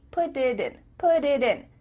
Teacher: instead of spending the time to let the air come out of your mouth, your tongue is just tapping the top of your mouth to make a D.